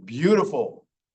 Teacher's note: Tapped T. Sometimes T sounds like D, as in beautiful.